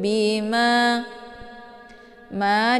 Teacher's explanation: dibaca panjang dua harakat ada Alif sebelumnya harakat fathah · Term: mad thobii zahiri